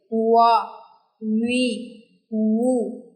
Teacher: वाव वाव जो है ये दोनों होठों के नाम मुकम्मल तौर पर गोल होने से वाव की साउंड प्रोड्यूस होती है